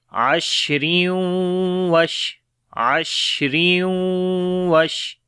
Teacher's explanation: پڑھیں گے تو دو زیر کے بعد واو آ گیا، یعنی تنوین کے بعد واو آ گیا تو ادغام غنے کے ساتھ کریں گے